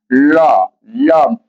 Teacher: तालु पर जाकर के जीवा मुड़ करके और दोनों बगल से यानी सांस स्पर्श करके बाहर निकलती है। तो ये वार्षिक है। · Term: पार्श्विक